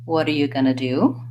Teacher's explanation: when I was saying going to do I linked those three all together